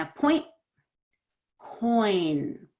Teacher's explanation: A point has a T, that makes it quick. Coin doesn't have a T, so it's a little more stretched out.